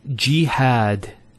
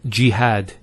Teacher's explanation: we have a fetha on the ha followed by the alif and that gives the elongation of the a sound